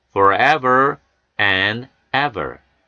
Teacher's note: F 사운드와 V 사운드는 입모형 같습니다. F 사운드는 무성음, V 사운드는 유성음입니다.